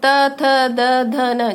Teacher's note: त वर्ग, दंत्य, जैसे त थ द ध न। जब आप इनको बोलोगे तो आप देखोगे कि ऊपर के दांतों में बीच में जीभ टच कर रही है।